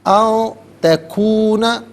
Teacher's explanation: او تکون، ان میں نون ساکن ہے، اس کے بعد تا حرف اخفا ہے، تو نون ساکن پر یہاں پر اخفا کیا جائے گا، ناک میں آواز لے جا کر گنگنانا